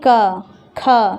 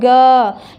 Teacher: क ख सीधे सीधे बोल दिए, लंबा नहीं खिंचा रहा, लेकिन ग लंबा खिंचा रहा था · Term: अघोष वर्ण